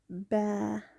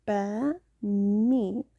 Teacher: the ba and the meme come from the lips